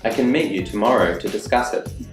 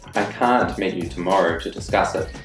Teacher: you'll notice that can is unstressed in the sentence but can't is stressed